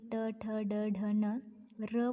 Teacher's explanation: आपण ट बोलतानी जिथे आपली जीभ चिटकत आहे किंवा जिथे जिभेचा स्पर्श होतोय त्या स्थानाला मृधा असे म्हणतात